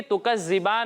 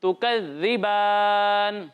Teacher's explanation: دال میں سیٹی کی آواز نہیں آئے گی